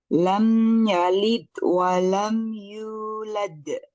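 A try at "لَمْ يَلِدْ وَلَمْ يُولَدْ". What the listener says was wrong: pantulannya huruf dal ketika lam yalid masih kurang. Lam yalid walam yulad.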